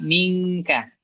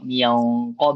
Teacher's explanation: kalau kaf mingka qof mungq lebih tebal dia